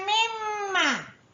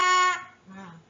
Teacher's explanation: Wajibul gunnah, mim dengung 2 harakat